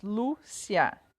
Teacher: Lúcia, são duas sílabas. Então, o Lu, que é a penúltima, é a mais forte. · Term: paroxítonas